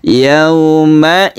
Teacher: huruf wau yang sebelumnya ada fathah ini namanya layin atau lemas